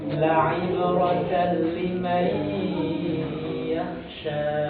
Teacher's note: Kalau idgham ke huruf ya diturunkan rahang bawahnya sambil ditempo, sambil didengung di dalam hidung.